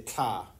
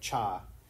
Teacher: So he had a lateral affricate instead of the boring old palatal affricate.